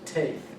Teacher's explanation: it has a fricative sound with the T. It's a dental sound with some friction there